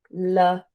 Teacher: I pronounce it Lorraine with the emphasis on the second syllable